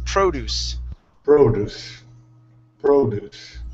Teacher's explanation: our stress is at the very beginning of the word.